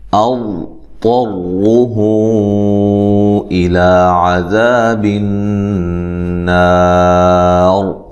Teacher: حمزہ کو تحقیق سے ادا کرنا ہے، طا کو موٹا ادا کرنا ہے، را کو بھی موٹا ادا کرنا ہے